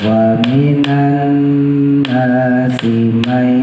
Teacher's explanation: Wa minan, tahan ya, nun tasdid jangan lupa. Nun sama mim tasdid ditahan minimal 2. Wa minan nasi may, masukin idgham diguna.